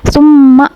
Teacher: gunah mim bertasydid dan dia dibacanya tuh ditekan atau didengungkan selama 2 harokat.